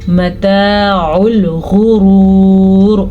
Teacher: غین کو پر پڑھیں گے، را کو بھی پر پڑھیں گے۔ اگر یہاں پہ ہم وقف کر رہے ہیں تو یہ را بھی پر پڑھی جائے گی، کیونکہ ویسی تو را پر باریک پڑھی جائے گی اگر وقف نہیں کریں گے، پڑھتے جائیں گے۔